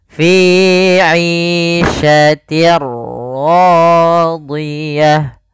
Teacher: Apa yang dimasukkan adalah suara tanwin. Awalnya fi 'ishatin ketemu ra, maka langsung masuk di ra-nya. Bunyinya langsung ke huruf ra. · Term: idgham bila gunnah